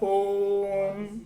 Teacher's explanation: प्लुत का स्वरूप 3 मात्रिक होता है जो थोड़ा और अधिक समय खींचता है